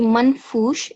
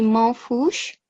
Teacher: So the noon has to be hidden, the sound, it has to be silent